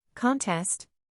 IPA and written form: kənˈtɛst (Contest)